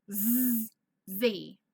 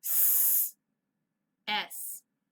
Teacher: So our mouths are the same. We're in the same shape or formation. However, one is voiced and one is unvoiced.